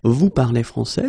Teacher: we can keep the same order, we just need to raise the voice at the end.